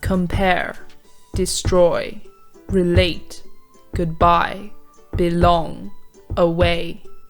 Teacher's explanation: We naturally emphasize the second syllable of these words · it has two syllables, starting with an unstressed one and ending with a stressed one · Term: iambic words, iamb